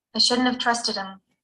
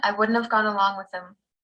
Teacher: sound and is linked to the modal before it shut up when we use these phrases in the negative we reduce both not and have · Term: reduced phrases